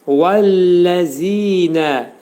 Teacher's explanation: Vəf hərfi burada dodaqlar gönçələnəcək. Və deyəcəyik.